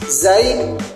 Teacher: bunyi ujung lidah dan gigi gesekan bersuara tipis